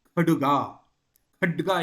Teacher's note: ಎಂಬುದರ ತದ್ಭವ ಕಡುಗ ಇಲ್ಲಿ ಏನಾಗಿದೆ ಒಂದು ಸ್ವಲ್ಪ ಆ ಸ್ವರ ಭಕ್ತಿಯಿಂದ ಕರೀತೀವಲ್ಲ ಒಂದು ಸ್ವರ ಜಾಸ್ತಿ ಹಾಕೊಂಡು ಖಡ್ಗ ಇದ್ದದ್ದು ಕಡುಗ ಮಾಡಿಕೊಂಡಿದ್ದಾರೆ